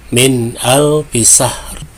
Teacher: nun sukun bertemu huruf ijhar, maka dibaca jelas